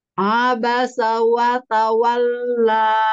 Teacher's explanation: lanjut Bismillahirrahmanirrahim Heeh Abasa wa tawalla Hm Wa Ta wa monyongkan wau karena dia makhrojnya dengan memonyongkan dua bibir